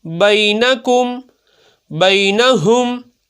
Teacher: یہاں یا ساکن سے پہلے با کے اوپر زبر ہے تو حروف لین کو بغیر کھینچے بغیر جھٹکا دیے نرمی سے معروف پڑھتے ہیں ، اگر بئی کو لمبا کر دیں گے یہ غلط ہو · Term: یا لین